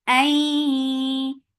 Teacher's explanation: Ay, it should be in your nose very nicely. Ay, idgham with gunna, so keeping the sound in your nose for a longer time